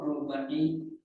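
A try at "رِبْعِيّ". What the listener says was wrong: Rib'i Rib'iyin ya, bikasri roi. Rib'iyin bikasri roi.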